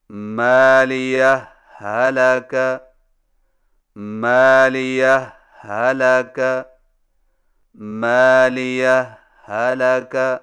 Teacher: پہلی ہا پر معمولی سا وقفہ کر کے لفظ ہلاکہ کی ہا کو بغیر تشدید کے پڑھیں، یعنی اس طرح مالیہ هلك مالية هلك مالية هلك، اس کو اظہار کہتے ہیں۔